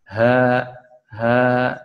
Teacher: huruf ha itu menggetarkan pita suara sambil mengeluarkan nafas ya di sini bergetarnya ketika mengucapkan huruf H maka pita suara